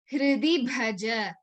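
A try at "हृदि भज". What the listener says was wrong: Very nice.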